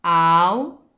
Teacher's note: ¿Dónde está la mayor fuerza de voz? En la antepenúltima sílaba. Esa es mi sílaba tónica.